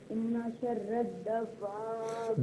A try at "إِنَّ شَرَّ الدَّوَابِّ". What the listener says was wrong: دواب بھی نہیں، دواب بھی نہیں، با کو جماؤں کے ساتھ ادا کریں گے، جس طرح میں پڑھ رہا ہوں اس طرح پڑھیے، شر الدواب